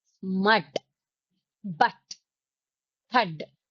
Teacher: inverted V, that is pronounced as a, a, a, very short sound